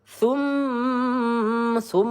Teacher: mim bertasydid gunah musyaddadah. Kita panjangkan dua atau tiga harakat.